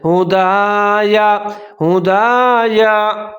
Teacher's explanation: پہلا جو دال ہے اس کو لمبا کر کے پڑھیں گے ایک الف کے برابر ، آگے یا کو لمبا نہیں پڑھنا، صرف زبر کو آپ